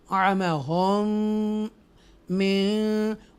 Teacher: after mim sakina, and other mim appears, so this is the idgham shafvi here